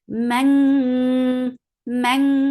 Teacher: Man, for fatha open jaws, and then there is ikhfa. This ikhfa is light and with the sound of ink. Like about you're about to say ink.